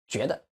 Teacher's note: when the last syllable goes with a neutral tone, we're going to stress the syllable before it